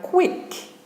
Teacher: the letter q combines two English sounds K and W